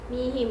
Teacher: Dan pada ayat keempat ada di pada kalimat mihim, itu adalah mat tabi'i yang dimana adanya kasroh bertemu dengan ya mati, dibacanya 2 harokat